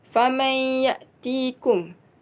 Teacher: Hukum di sini idgham ma'al gunnah kerana huruf nun sakinah bertemu huruf ya dan dibaca masuk dengan dengung 2 harakat. Kalimah seterusnya ya'tikum bima.